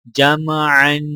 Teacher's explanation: جیم کو میم کے ساتھ ملاتے وقت غنہ نہیں کیا جائے گا کیونکہ میم کے آگے حروف حلقی عین ہے اور عین کے اوپر دو زبر ہیں تو لہٰذا عین پر غنہ کیا جائے گا اور وقف کرنے کی حالت میں عین کو الف کے ساتھ ملایا جائے گا.